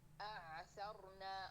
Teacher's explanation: تو عین کو حمزے کے ساتھ نہیں کنٹینیو کرنا. حمزہ قوی ہے, حمزے کو تھوڑا سا جہر اور شدت کی صفات اس میں پائی جاتی ہے, تو عین کو توسط کے ساتھ پڑھنا ہے.